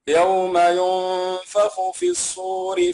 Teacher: نعم غنته مرققة لأن بعدها حرف الفاء